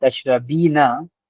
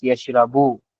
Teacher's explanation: everyday spoken Arabic drops the final short vowels and noon on the end of the verbs. This means that tashrabina becomes tashrabi.